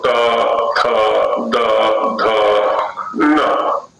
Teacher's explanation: इसमें नासिका का भी सहयोग हो जाता है, पंचम वर्ण में स्थान वही रहता है। तो ये तवर्ग का स्थान हुआ दांत के मूल से, और दांत से तात्पर्य होता है ऊपर वाले दांत, क्योंकि नीचे वाला तो जो भाग है वो चलायमान है, चलायमान है इसलिए वो कर्ण के रूप में रहेगा।